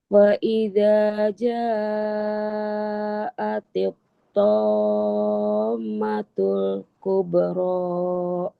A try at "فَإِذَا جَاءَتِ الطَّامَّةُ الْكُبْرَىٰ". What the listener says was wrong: Kita ulang di mim syiddah, tahan, terus agak masukin.